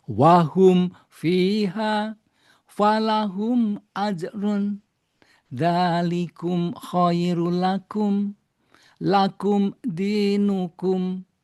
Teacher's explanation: Di mana idhar itu cara melafalkannya yang pertama mim atau tanwin sama ya, idhar halki, idhar syafawi maupun idhar mutlak itu sama cara melafalkannya. Yaitu masing-masing nun atau mim dibaca jelas, tempo bacaannya satu harokat dan tidak berdengung